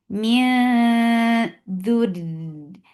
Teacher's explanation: This ikhfa is light. You are keeping your tongue straight. Preparing your tongue to say letter dal, and you're keeping the sound in your nose.